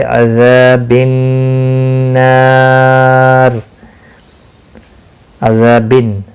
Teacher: عذاب النار، عذابن، نون مشدد پر غنہ ہوگا، ذا الف مدہ ہے، ایک الف کے برابر کھینچ کر پڑھیں گے.